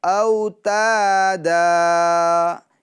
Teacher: جب رکیں گے ٹھہریں گے تو پڑھیں گے او تا دا، یعنی دو زبر کی تنوین کو ایک الف اور ایک زبر سے بدل دیں گے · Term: وقف